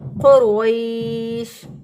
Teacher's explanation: قاف کو بھی موٹا پڑھیں گے، رو کو بھی موٹا پڑھیں گے۔ قاف کو موٹا اس لیے پڑھیں گے کیونکہ یہ حروف مستعلیہ میں سے ہے، یعنی موٹے حروف میں سے ہے۔